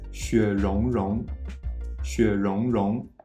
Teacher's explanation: Now for the ron ron part, you might be tempted to read it as ron, but the R sound is a retroflex consonant, meaning that the sound is produced with the tip of the tongue curled back toward the hard palate